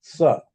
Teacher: the tip of the tongue is touching the upper teeth and pronouncing sa, this is dantasya.